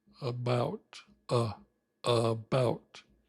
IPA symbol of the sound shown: ə